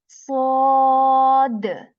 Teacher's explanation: for sod, you will feel that the back part of your tongue is raised a bit to make this sound heavy